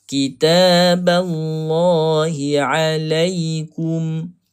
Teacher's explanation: A dibaca dengan nipis dahulu. Huruf lam ni baru kita baca dengan tebal. Kitaballah bukannya ball.